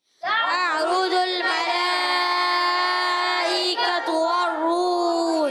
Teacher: تعرج، تا کو عین سے ملانا ہے، عین کی آواز حلق کے درمیان والے حصے سے، را پر پیش ہے، را پر ہو جائے گا، جیم کو لام سے ملائیں گے، لام کو ہلائیں گے نہیں۔ ملائکۃ میں مد ہے، مد متصل، حرف مدہ کے بعد حمزہ اسی کلمے میں 2 ڈھائی الف یعنی 4 یا 5 حرکات کھینچ کر ادا کریں گے